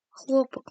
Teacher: ударение падает на первый слог, яғни екпін бірінші дыбысқа түседі.